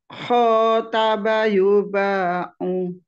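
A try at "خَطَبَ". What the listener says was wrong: To bukan tak. Khotoba.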